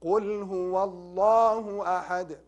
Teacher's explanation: we recite it mufakhama, means heavy, means hard.